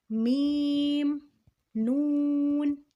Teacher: نون اور میم میں ناک میں آواز لے کے جائیں گے